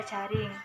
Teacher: bunyi getar yakni bunyi yang dihasilkan dengan mengartikulasikan lidah pada lengkung kaki gusi